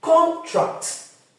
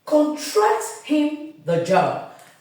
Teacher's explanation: I repeat the stress leaves the first syllable and goes to the second when it is a verb